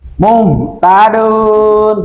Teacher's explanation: Nun dari mana? Ujung lidah dengan langit-langit yang atas.